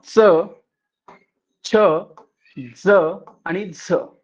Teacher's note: दात आणि टाळू यांना जिभेचा एकाच वेळी स्पर्श होऊन उच्चारल्या जाणाऱ्या वर्णांना दंत तालव्य वर्ण म्हणतात